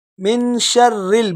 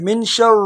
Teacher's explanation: من شر الوسواس الخناس، صحیح ہے، یہاں پر مسٹیک کیا ہے، یہاں پر اکثر لوگ پڑھ لیتے ہیں من شر را کو یہاں پر موٹا پڑھتے ہیں، یہاں را موٹا نہیں ہے بلکہ را یہاں باریک ہے۔ من شر، جب را ویسے ہے موٹے حروف میں سے را، اگر اس کے نیچے کوئی حرکت آ جائے یعنی زیر آ جائے تو اس کو پھر باریک پڑھیں گے، اس کا موٹا پن خود بخود ختم ہو جائے گا۔